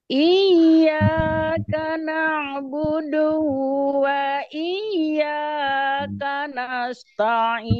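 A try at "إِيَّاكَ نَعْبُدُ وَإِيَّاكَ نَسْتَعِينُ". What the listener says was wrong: Ya, do-nya, Bu, dipendekin. Iyyaka na'budu wa iyyaka nasta'in.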